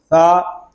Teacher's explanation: ثا یہ حروف لسانیہ میں سے ہے، اس کو ہم نرمی کے ساتھ ادا کریں گے، اس میں سختی نہیں کریں گے